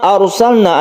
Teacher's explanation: ada sukun ro sebelumnya ada fathah maka kita baca tebal atau tafkim atau disebut juga mufakham jadi rnya ini ditebalkan A